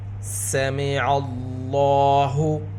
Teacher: لفظ اللہ کے لام سے پہلے زبر، لفظ اللہ کے لام کو پر پڑھیں گے، لام کے اوپر کھڑا زبر، لام کو 2 حرکت کے برابر کھینچ کر بھی پڑھیں گے